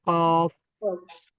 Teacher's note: জিহ্বার একেবারে শেষ ভাগ উপরে নরম প্যালেটে যোগ করতে হয়